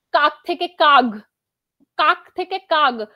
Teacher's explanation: কোন সঘোষ ধ্বনির প্রভাবে যদি অঘোষ ধ্বনি সঘোষ ধ্বনিতে পরিণত হয় তাকে বলা হয় ঘোষীভবন।